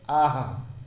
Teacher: हा का और विसर्ग का उच्चारण स्थान एक होता है, इसलिए हा जैसा उच्चारित उसका विसर्ग का होता है। जैसे आह, आ के बाद में थोड़ा सा जोर दे के बोलना पड़ता है हा, और जब बड़े आ के सामने बोलता है तो उसके सामने भी थोड़ा जोर देना पड़ता है।